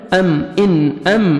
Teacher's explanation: ام میم ساکن کا بھی اظہار ہے, جلدی پڑھیں گے